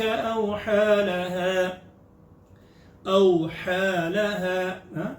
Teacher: لین ہے, جھٹکا بھی نہیں, پیار سے, لین کا مطلب ہوتا ہے نرم